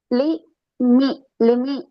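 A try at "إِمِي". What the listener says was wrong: எப்படி முதலாவது பேல? லீ அல்ல. ஆ இ இ இ இ.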